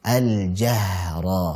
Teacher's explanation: haknya memiliki sifat rakhawah, dialirkan